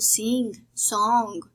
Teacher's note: we have the voiced velar nasal sound, the ng endings